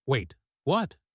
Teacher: the worried way, a little tighter, faster, with tension instead of lightness underneath the same rising shape